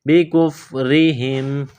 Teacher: کاف کو باریک کرنا ہے، را کے نیچے زیر ہے، را کو باریک کرنا ہے